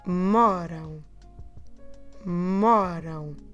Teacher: And you finish with your lips closed. But we're not stressing the rão sound. We're stressing the mo before.